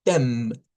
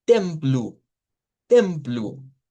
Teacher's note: vamos a hacer una E nasalizada y vamos a decir tem, nasalizada. Y esta O se va a convertir en U.